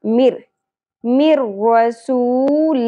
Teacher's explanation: نون ساکن کے بعد را اگیا تو ہم نے ادغام تو کرنا ہے لیکن غنہ نہیں کرنا